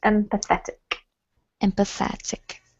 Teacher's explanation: the emphasis is on the et, so it's empathetic